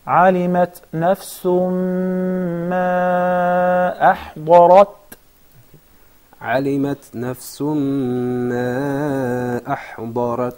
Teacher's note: I know that you're trying to soften or thin the ra in order to suit the ta, but the ra is preceded with the dad, and it has the vowel fatha, and the previous letter also has the vowel fatha. So it is highly mufakhama.